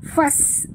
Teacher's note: Mim mati bertemu fa tanpa dengung izhar syafawi. Fas, bunyikan safir pada sin yang mati